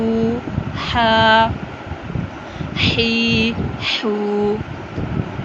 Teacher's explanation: یہ حلق والا ہا ہے، اس کو حلق سے ادا کریں گے، حلق کا درمیان سے.